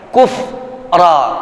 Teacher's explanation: Wa may yatabaddalil kufra, jangan ada yang menyeret bacaan kufra, tidak. Tuntaskan huruf fa yang sukun yang matinya kufra, susul langsung dengan huruf selanjutnya ra.